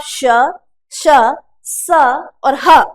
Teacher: आपके जीभ को संघर्ष करना पड़ता है। वायु अंदर क्या करती है, घर्षण करती है, और घर्षण के कारण वायु गर्म होकर बाहर निकलती है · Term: ऊष्मीय व्यंजन